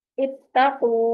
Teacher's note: क़ा भी जो है ये भी हरूफे कलकला में से है, साकिन है तो इस पे कलकला होगा, पलट की आवाज आएगी